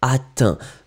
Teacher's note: On ne prononce pas le T, mais il doit être écrit.